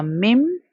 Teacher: اب یہاں پر اگر آپ کو نون ساکن کے بعد نیکسٹ لیٹر میم نظر آتا ہے، میم بھی یرملون لیٹر ہے، سو ہمیں نون کا ساؤنڈ سکپ کر کے میم کے ساتھ میم کا غنہ کرنا ہوگا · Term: ادغام